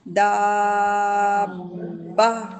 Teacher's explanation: دا کو لمبا کر کے چھوڑنا نہیں ہے، جو تشدید ہے نا، تشدید دو حرکت اس کو ہم ساتھ ہی پڑھیں گے